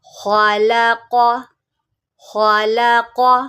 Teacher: ایک خا کو موٹا کریں گے، دوسرا قاف کو